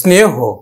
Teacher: শেষে যদি হ থাকে তাহলে সবসময় কিন্তু ওকার উচ্চারিত হবে